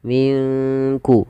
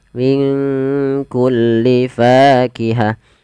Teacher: Kaf di sini kita namakan dengan bacaan Ikhfa maka cara membacanya samarkan nunnya kepada huruf Kaf